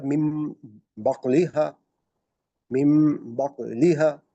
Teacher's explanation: اس کی ہم نے مثال جو ہے وہ دیکھ لی تھی کہ یہ جیسے آپ دیکھیے گا نون ساکن کے بعد با آ گیا تو یہ میم میں تبدیل ہو گیا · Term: اقلاب